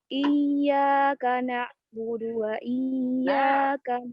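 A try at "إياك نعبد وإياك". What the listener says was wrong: huruf ainnya ya harus ke dalam lagi biar di tenggorokan bagian tengah. Huruf lain, balayin. Huruf bayyinah, ya, bainiyah, huruf bainiyah. Jadi iyyaka na'budu, ya. Jangan na'budu. Jangan dipotong na'budu, tapi na'budu.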